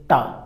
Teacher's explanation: टा वर्ग अब मूर्धा से, जैसे टा, ऊपर से ऊपर जीवा जाएगी और तुरंत नीचे आ जाएगी।